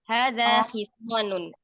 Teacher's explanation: nanti intonasinya jangan bertanya